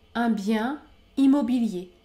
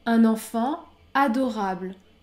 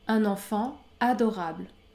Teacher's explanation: je ne fais pas la liaison après le nom au singulier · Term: la liaison est interdite